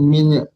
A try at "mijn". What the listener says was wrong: Bukan min ya di sini ya. Bukan min. Min plus, tapi ini bukan min. Main. Agak sedikit dibuka mulutnya. Main. Bukan min.